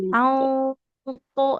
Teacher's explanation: Dengung ikhfanya. Nun sukun bertemu ko. Nah, dengung tapi tebal.